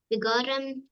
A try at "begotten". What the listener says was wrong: Beautifully pronounced. Even that word, that funny word, begotten. And you said that perfectly.